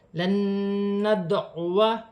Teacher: ادغام مال غنہ کا قاعدہ ہے، غنہ بھی کیا جائے گا، ملا کر بھی پڑھا جائے گا. دال ساکن ہے، دال میں قلقلہ پیدا ہوگا، جیسے لن ندعو، الف سے پہلے زبر آ رہی ہے، الف مدہ بن رہا ہے، لیکن اس الف کو پڑھا نہیں جاتا.